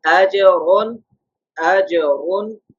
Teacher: Similarly, if there's a 2 zabar, a 2 pesh, it's a second condition. On the Ra, Ra should pronounce in a thick tone